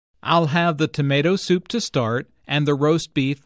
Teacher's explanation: Notice that tomato soup, roast beef, mashed potatoes, and peas are stressed because the food order is the important information here. Notice also that tomato soup, roast beef, and mashed potatoes are compound words.